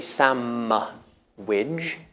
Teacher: it's because the D in sandwich is not usually pronounced